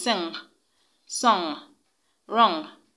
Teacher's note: The ng sound is pronounced through the nose, and it occurs in words that have N and G together and in words that have N and K together. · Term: nasal sound